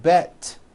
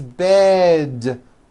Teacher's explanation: to words with d endings bed has a voiced d ending it's not bet with an unvoiced T it's bed with a voiced d